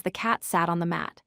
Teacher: Say this sentence with clear, sharp T sounds. Make sure there's no vibration in your throat for either T.